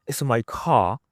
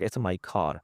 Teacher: mostly the people from North America, they pronounce the R